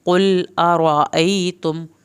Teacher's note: क़ाफ को पुर करके पढ़ना है